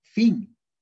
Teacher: Labio dental. El labio inferior se toca con los dientes superiores de la boca.